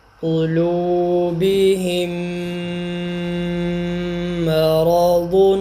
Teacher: تو یہ میم ساکن کے بعد میم جب آئے گا تو ہم پہلے میم کا دوسرے میم میں ادغام کریں گے اور ساتھ میں غنہ بھی کریں گے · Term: ادغام شفوی